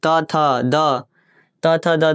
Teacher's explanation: त थ द त थ द ये सब दंत से बोला जाता है